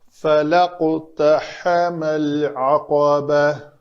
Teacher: عین کا مخرج وسط حلق اور قاف حروف قلقلہ میں سے ہے، اس کو پر کریں گے۔